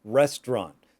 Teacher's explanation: we don't even pronounce the T at the end. It's called a stopped T. We start to pronounce it, but we don't.